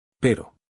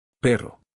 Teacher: The first word has a tap. The second word has a trill.